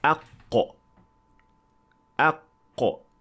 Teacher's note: Qaf is produced when the deepest part of the tongue makes contact with the soft palate. So there is touching between the tongue and the soft palate.